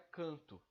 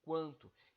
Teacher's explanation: esse QU aqui, ele não é o som do K, não é canto, é quanto. Então, esse U é pronunciado sim.